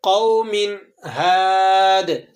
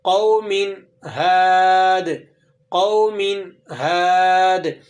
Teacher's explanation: بغیر غنے کے اظہار کے ساتھ اس کو پڑھنا ہے، قوم ہاد۔ غنہ نہیں کریں گے، آپ اس طرح سے نہیں پڑھیں گے قوم ہاد، یہ درست نہیں ہے، بلکہ بغیر غنے کے آپ اسے اس طرح سے ادا کریں گے، قوم ہاد، قوم ہاد۔